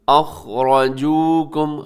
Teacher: خا موٹا پڑا جائے گا، را بھی اس میں موٹا پڑا جائے گا